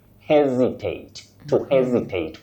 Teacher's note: with a stress at the onset